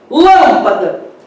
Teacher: a terceira sílabas de trás para frente é a mais forte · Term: sílaba tônica